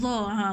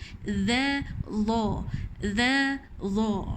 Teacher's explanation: Hujung lidah di antara dua gigi tapi dia tebal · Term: makhraj dha